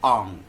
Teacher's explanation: यानी कंठ से बोलेंगे और नाक उसमें शामिल कर देंगे।